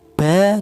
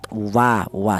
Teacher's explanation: Tapi dibedakan untuk huruf mim dan huruf ba ini dihasilkan dari kedua bibir yang rapat. Sementara untuk huruf wau ini dihasilkan dari kedua bibir yang renggang